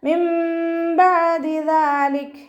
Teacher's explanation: മിൻ ബഅദി ദാലിക് നൂൻ സാക്കിനയ്ക്ക് ശേഷം ഇഖ്ലാബിൻ്റെ അക്ഷരമായിട്ടുള്ള ബാ വന്നു. നൂൻ സാക്കിനയെ മീമാക്കി മാറ്റിമറിച്ച് ഒന്നയോടുകൂടി ഓതി കൊടുക്കുക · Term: ഇഖ്ലാബിൻ്റെ മീമാണ്